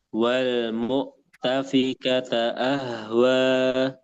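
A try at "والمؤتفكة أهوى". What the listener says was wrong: Nah, itu bagus.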